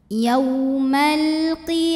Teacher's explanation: kemudian ada hukum alif lam namanya alif lam qamariah karena ada alif lam yang menghadapi huruf qamariah yaitu huruf q maka lam sukun ini kita bunyikan dengan jelas